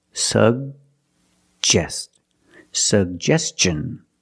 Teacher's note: We have two G's and we're going to pronounce both of them. The first G is a hard G sound. Sug. And the second G is the J sound like juice and jump.